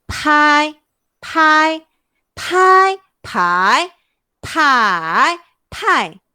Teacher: Kalau P-A-I, dia akan bunyi pai. P tu kena keluarkan angin.